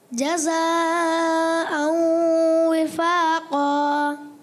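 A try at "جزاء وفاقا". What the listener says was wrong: थोड़ा सा मद को और खींचे दोबारा।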